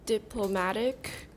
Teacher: diplomatic, stress on the third syllable